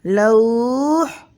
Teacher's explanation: حالت وقف میں واو لین کے بعد والا حرف وقف کی وجہ سے ساکن ہو رہا ہے، اس لیے یہاں پر اس واو لین کو ہم 2 الف کے برابر کھینچ کر پڑھیں گے